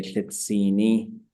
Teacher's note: But this is a process where a verb is becoming an adjective. So the short version is you add a low tone suffix to it